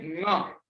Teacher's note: okay, हम लोग जब प्रोनाउंस करते हैं ङ, तो नासिका भी यूज हो रही है और कंठीय भी यूज हो रहा है